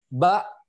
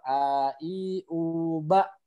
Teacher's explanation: Nah, ketika sukun dia jadi terhenti, semuanya nutup. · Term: hamzah sakinah